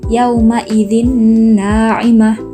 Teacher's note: maka dibaca masuk mendengung panjang 2-3 harokat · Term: idgam bigunnah